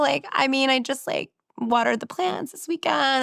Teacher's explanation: the end of this sentence goes up